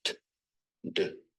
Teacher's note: produced with the tongue at or near the ridge right behind the Upper Front Teeth